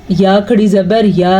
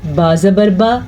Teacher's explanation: کھڑی زبر کی مقدار یا کھڑی زبر یا اتنی ہے، جبکہ زبر کی مقدار با زبر با اتنی ہے